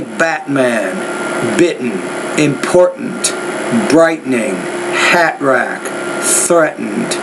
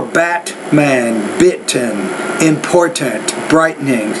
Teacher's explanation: when it's in the middle of the word we call that a glottal stop